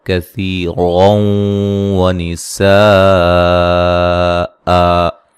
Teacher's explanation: یہاں کاف کو باریک پڑھیں گے، سا کو نرم ادا کریں گے، سی یا مدہ ہے۔